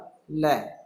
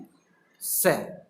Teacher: लकार मतलब ल एवं सकार यानी स का उच्चारण स्थान दंत है, इसलिए इन्हें दंतीय वर्ण भी कहते हैं।